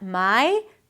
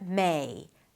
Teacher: Start with an 'e', then shift to an 'i'. Not 'mai', but 'mei'.